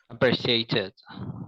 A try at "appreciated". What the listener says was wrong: Yeah, appreciate, but with a D. Appreciated, commemorated. See, that's a hard one because I think that no one ever talks about the T because we American English speakers, we do not want to admit that we often say the T is a D.